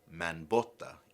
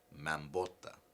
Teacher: some speakers will not create any consonant assimilation, and they will just simply say manbota instead of mambota.